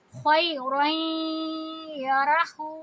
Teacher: جب بھی تنوین کے بعد یا ہوتا ہے تو ہم اس میں را کو یا سے ملاتے ہوئے غنہ کی آواز کرتے ہیں اور 2 حرکہ آواز کو لمبی کریں گے، خیرین یرہو، ہو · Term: ادغام